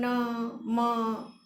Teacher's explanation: હવા નાસિકાપથ અને મુખપથ બંને દ્વારા પસાર થતી હોય અને મુખપથમાં ક્યાંક ને ક્યાંક અવરોધ થતો હોય ત્યારે ગુજરાતીમાં ન, મ જેવા અનુનાસિક ધ્વનિઓ ઉચ્ચારાય છે